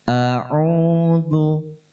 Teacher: Zal dibaca tipis, tidak seperti dha. · Hamzah dan ain ini makhrajnya sama-sama berada di tenggorokan. Yang membedakan, hamzah berada di tenggorokan dalam, sedangkan ain berada di tenggorokan tengah. Dan ain suaranya sedikit tertahan.